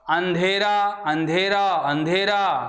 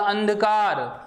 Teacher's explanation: अंधेरा में तो ध्वनि नाक और मुख दोनों से निकल रही है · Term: अर्धचंद्र बिंदु